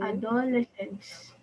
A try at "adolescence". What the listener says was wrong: So nag-stress ka sa do, okay, sa adolescence. But the thing is that class, the proper way on how we pronounce this word is adolescence, okay? Adolescence.